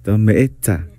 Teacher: La glotal va después de la E. M, E, glotal, T, Z, A.